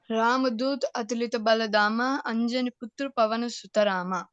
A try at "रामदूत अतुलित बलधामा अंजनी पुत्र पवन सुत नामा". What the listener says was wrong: हाँ, पवन सुत नाम है, रामा नहीं, नामा। फिर से बोलेंगे।